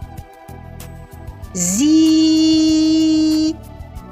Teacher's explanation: цей звук і єдиний із усіх голосних звуків, який пом'якшує всі приголосні